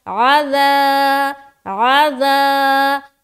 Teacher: تو 3 سے 4 الف کھینچیں گے، أَضْطَرُّهُ إِلَى، إِلَى حمزہ زیر ای، لام کھڑا زبر لا، إِلَى، آگے عَذَابٍ، عین زبر ع، ذال الف زبر ذا، بالکل نرمی سے لیکن کھینچیں گے، الف مدہ کریں گے